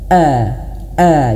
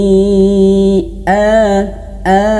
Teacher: Tapi harus hamzahnya harus jelas. Hamzah ini dia memiliki sifat jahr. Jahr dan juga dia syiddah. Terputus angin dan terputus nafas.